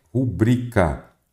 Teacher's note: a pronúncia correta dela é rubrica. Então, quer dizer que ela é uma paroxítona.